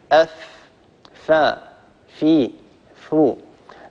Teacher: طبعا إذا أردتم أن تعلموا مخرج حرف معين يعني ائتوا بهذا الحرف وانطقوه ساكنا، انطقوا الفاء ساكنة، أف. لاحظوا كيف أن أطراف الثنايا العليا قد قرعت باطن الشفة السفلى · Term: حرف الفاء